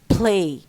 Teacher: And we number 3 الالفون الثالث لله بقى is voiceless la, and this comes after the accented aspirated p or k, as in play. We find that p, which is voiceless, makes la also voiceless, it devoiced la